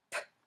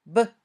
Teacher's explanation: If you confuse p and b, put your hand gently on your throat. When you say p, you shouldn't feel vibration in your throat. When you say b, you should feel vibration. When you practice this way, be sure to say just the p or b sound.